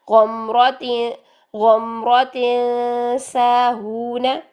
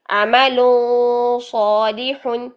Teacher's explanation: سین باریک ہوتا ہے، صاد موٹا ہوتا ہے